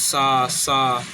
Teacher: सा तालु से बोलते हैं इसलिए ये तालव्य है